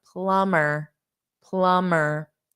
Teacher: the M Plum and then you just add the SS the B is not there